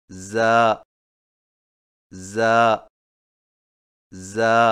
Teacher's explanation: زا کی ادائیگی میں زبان کی نوک کو سامنے والے نیچے کے دو دانتوں کے کناروں سے مضبوطی سے لگا کر باریک اور سیٹی جیسی آواز میں پڑھیں، یعنی زا زا زا۔